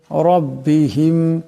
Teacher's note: এখানে রাবর আছে এ রাকে মোটা আওয়াজে পড়তে হবে